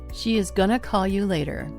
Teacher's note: later has stress on the first syllable, which is lay.